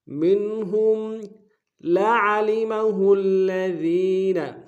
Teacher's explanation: عین کو گہرائی سے ادا کریں گے لعلمہ میں